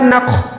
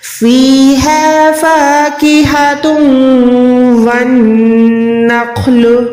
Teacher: خو جو ہے حروف مستعلیہ یعنی ہر حال میں موٹا پڑھا جانے والا حروف ہے، اور خو جو ہے حروف حلقی میں بھی آتا ہے، یعنی گلے کے اوپر والے حصے سے اس کی ادائیگی ہوتی ہے